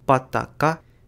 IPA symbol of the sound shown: b̥ d̥ ɡ̊